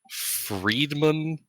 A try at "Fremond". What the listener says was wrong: There's no D in his name. Well, no D in the middle of his name.